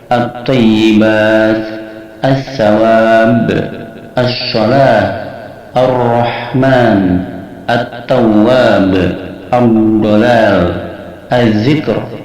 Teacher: Maka lamnya tidak dibaca atau lebur, dimasukkan pada huruf setelahnya. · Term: idgham syamsiyah